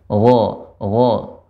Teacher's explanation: Adapun gha ya tidak ada hikkahnya, tidak ada garukannya.